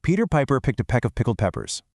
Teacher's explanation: Focus on all those explosive P sounds. Say it slow, really exaggerate it, then try to pick up the speed.